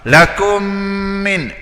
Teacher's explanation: Mim yang pertama tak ada baris. Mim yang pertama tak ada baris bermaknanya idgham. Idgham ni masuk dalam mim yang kedua dah. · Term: Idgham syafawi